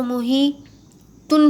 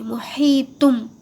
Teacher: تنوین کی آواز نکالنا ہے لیکن نون کی آواز نہیں نکلیں گی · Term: چھوٹا میم